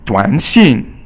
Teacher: 短 is 三 声, and then 信 is 四 声, so it's falling and rising, and then falling tone